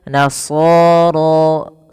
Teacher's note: Ra juga tebal, dan di sini ra-nya kita namakan dengan ra tafkhim. Ra tafkhim, yaitu ra yang dibaca dengan tebal.